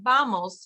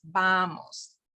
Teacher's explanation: So you'll notice again, it's more of a B than a V, but it's not vamos. You don't put your teeth on your bottom lip. It's vamos. Okay, your lips should touch. Vamos. Vamos means come on, let's go.